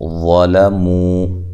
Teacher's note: وا کو خوب موٹا کریں، لام کو باریک، مو واو مدہ ہے